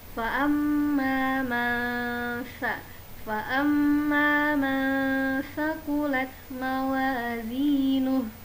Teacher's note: Jadi teman-teman mengucapkan huruf nun, menyamarkan huruf nunnya dan bersiap mengucapkan huruf sa. Huruf sa makhrajnya adalah ujung lidah bertemu dengan gigi bagian atas, gigi seri bagian atas, sedikit dikeluarkan.